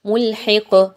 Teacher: ملحق، قاف پر جب آپ جزم لگاتے ہوئے وقف کر رہے ہیں، دعا مکمل ہو رہی ہے تو آپ نے اس قاف کو ہلا کے پڑھنا ہے، قلقلہ کرنا ہے